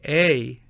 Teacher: when you say A, you will have a gliding sound that represents several positions of the mouth, not one.